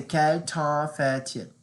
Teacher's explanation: The reason why I pronounce fait, you hear the t, is because there's a vowel next to it, and you have to call that, what's the bridge between the consonant to the vowel is called a liaison.